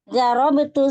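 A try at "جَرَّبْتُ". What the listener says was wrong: Rohnya tasydid jarrab itu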